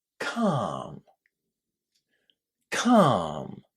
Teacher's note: lots of students would find it quite surprising that the L inside this word is silent. We don't say it calm. · the L inside this word is silent. We don't say it. Calm. It's just a long R inside.